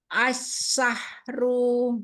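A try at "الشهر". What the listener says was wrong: Ru jangan panjang. Ya, haknya alirkan lagi. Asyahru. Syahru.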